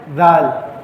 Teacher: ذال جو ہے یہ دونوں دانتوں کے درمیان ہلکی سی زبان کی نوک رکھ کے نرمی کے ساتھ ادا کیا جاتا ہے